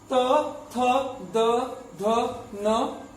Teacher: त वर्ग का उच्चारण दंत से होता है